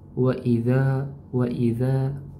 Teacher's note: Waidza di sini alif sebelumnya fathah mad thobi'i teman-teman ya. Mad thobi'i panjang dua harakat.